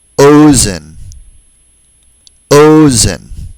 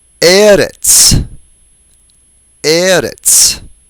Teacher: They're all penultimately stressed. That is, they all have stress on the second to the last syllable.